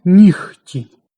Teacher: Або навпаки, відбувається оглушення у слові «нігті». Дзвінкий «г» міняється на глухий «х». Під впливом глухого «ті» чується «нігті».